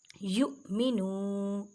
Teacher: حمزہ ساکن ہے جھٹکا دے کے پڑھیں